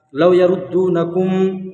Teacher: میم ساکن کے بعد میم ہے، اس لیے ادغام شفوی ہوگا، یہاں پر گنہ کرنا ہے